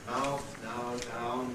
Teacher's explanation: Ow, as in mouth, now, down, which starts open, ow, and goes closer.